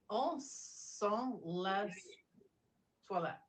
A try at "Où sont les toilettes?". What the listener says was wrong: Remember the S is what? So don't say less. Le. The S at the end of the word is always silent.